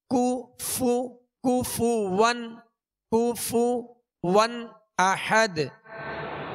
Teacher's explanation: پیش ہے دونوں کے پیش یہ صحیح سے ادا کریں گے ہونٹوں کو گول بھی کریں گے اور بغیر کھینچے بغیر جھٹکا دیے معروف ادا کریں گے